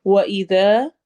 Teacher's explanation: ذال کو نرمی سے اور الف مدہ کرتے ہوئے